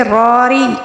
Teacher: راری ایک را کو ہم پر پڑھیں گے، ری را کے نیچے جو زیر ہے اس کو ہم باریک پڑھیں گے